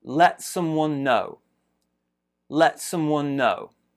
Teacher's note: In the first one, let, small stress there. Bigger stress is on know.